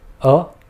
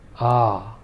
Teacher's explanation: Notice how the first short vowel was just a short rap of a sound, whereas the longer vowel was more drawn out. Also, in this case, the vowel sounds themselves are distinct.